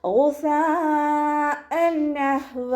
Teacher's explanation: ഐനിൻ്റെ മഖ്റജ് അദ്നൽ ഹൽക്കാണ്, sound ഐനായി പോവാതെ ശ്രദ്ധിക്കുക · മദ്ദശ്വരത്തിന് ശേഷം അതേ വേർഡിൽ തന്നെ ഹംസയും വന്നു. മദ്ദശ്വരവും ഹംസയും ഒരേ വേർഡിൽ വന്നു കഴിഞ്ഞാൽ 4 or 5 കൗണ്ട് നിർബന്ധമായിട്ട് നീട്ടിക്കൊടുക്കുക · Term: മദ് വാജിബ് മുത്തസിൽ